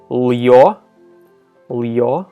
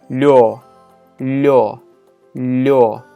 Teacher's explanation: But in a closed syllable, or when preceded by a consonant, yo is blended in with the consonant, and the y part of it kind of disappears a little bit, and it does affect the consonant too.